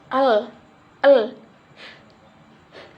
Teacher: lidah menghalangi bagian tengah mulut sehingga udara harus melewati sisi-sisinya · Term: konsonan lateral